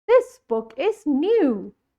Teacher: I have said the word new more stronger. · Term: stress